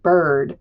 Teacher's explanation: These are our um liquids here, the R taking over the vowel in front of it and making it sound very different than a short vowel or a long vowel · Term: R controlled vowels